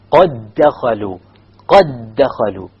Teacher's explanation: When you do an idgham, the qalqala has to drop.